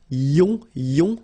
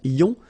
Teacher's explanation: Remember, it goes in your nose, it's nasal, yon.